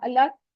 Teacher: लामे जलाला है, उसके ऊपर खड़ी जबर है, उसको 2 काउंट स्ट्रेच करेंगे और उससे पहले वाव पे जबर आ रही है, तो ये लाम, लामे जलाला मोटा पड़ा जाएगा। अल्लाह, लफ्ज अल्लाह के हु को हमने लंबा नहीं करना।